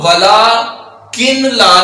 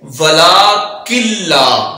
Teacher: جب بھی نون ساکن آئے اور اس کے بعد لام آئے یا را آئے تو نون ساکن کو ظاہر ہی نہیں کرتے، اور یہاں ادغام یرملون ہو رہا ہے. اب ولا کن لا نہیں پڑھیں گے، جبکہ پڑھیں گے ولا کلا.